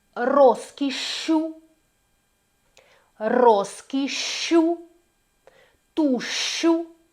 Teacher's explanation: І далі в нас є така подовжена вимова у подвоєнні